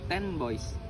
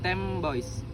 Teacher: This happens because the sound N changes to M before B, since it's easier to move the lips together when producing B. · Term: assimilation